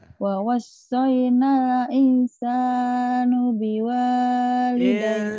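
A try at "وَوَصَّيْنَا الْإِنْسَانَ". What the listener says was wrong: insana. Nah. Bukan nu.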